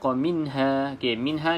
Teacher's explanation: pastikan tidak ada lantunan ya pada Nun yang sukun ataupun nun mati